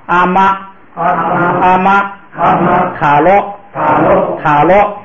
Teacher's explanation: 第二音节是低声调的都变高平调